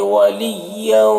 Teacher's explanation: ادغام ناقص ہو رہا ہے، غنہ کے ساتھ میں پڑھیں گے۔ ولا میں الف مدہ ہے، اسے ایک الف کے برابر کھینچ کر پڑھیں گے۔